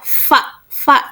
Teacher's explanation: terasa kan bahwa si bibir bawah dan gigi atas itu menempel ketika menyebutkan huruf fa